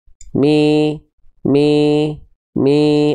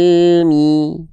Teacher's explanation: kalau tengah lidahnya enggak diangkat ketika kita melafalkan harakat kasrah seperti ini, maka dia enggak akan kedengaran i, tapi dia akan terdengar e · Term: vokal i